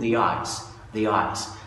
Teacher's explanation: اوكي، لكن خد بالك ان النيتيفز بقى مش بس بينطقوها the، لما بتبتدي بفاول بقى مش بينطقوها بس the، دول كمان بينطقوها بيحط واي ما بين ال the وما بين الفاول. فبدل ما يقول the ice يقول the eyes، the eyes.